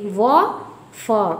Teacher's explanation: दंतोष्ठ, दांत और ओठ दोनों से, व और फ।